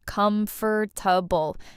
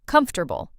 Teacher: comfortable >> A lot of learners say every letter, com-for-ta-ble, but native speakers say it shorter, comfortable. Three parts, not four.